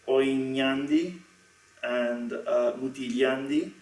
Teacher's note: Across the prosodic word, however, we do get palatalization as long as the word that follows begins with a vowel. So we get things like oinyandi and mutilyandi, and you'll notice that the glide in oin, in this case, does not disappear, it stays.